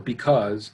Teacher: you kind of place emphasis or stress the second half of the word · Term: iambic foot